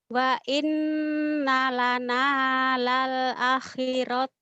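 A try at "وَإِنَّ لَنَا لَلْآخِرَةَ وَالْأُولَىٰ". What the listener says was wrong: A-nya panjang. Lal a. Wa inna lana.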